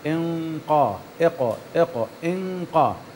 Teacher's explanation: الغنة تتبع ما بعدها، إذا كان ما بعدها مفخم الغنة تفخم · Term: غنة الإخفاء